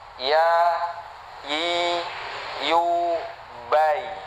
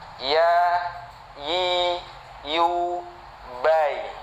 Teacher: ini keluar dari wasatul lisan dengan langit-langit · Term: huruf ya